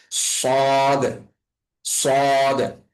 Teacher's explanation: সদটা উচ্চারণ করার সময় আমাদের মুখটা একদম ভরে উচ্চারণ হবে, অর্থাৎ আমাদের মুখের মধ্যে আওয়াজটা অনেক বেশি পরিমাণে ভারী হয়ে যাবে, এবং হচ্ছে যে আমাদের জিহ্বাটা একটু বেশি পরিমাণে মোটা করে উচ্চারণ করার চেষ্টা করতে হবে, জিহ্বাটাকে একটু ভারী করে রেখে, অর্থাৎ সদ।